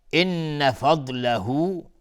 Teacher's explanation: من ربک نون ساکن بشه را ادغام بدون غنه. ان فضله نون مشدد 2 حرکت غنه میدی